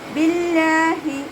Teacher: ഹ എന്നുള്ള അക്ഷരത്തിൻ്റെ സൗണ്ടിനെ തൊണ്ടയുടെ അവസാന ഭാഗത്തുനിന്ന് തന്നെ കൊണ്ടുവരാൻ ശ്രദ്ധിക്കുക. ഹംസയുടെ സൗണ്ടായി പോവാതെ നോക്കുക കേട്ടോ.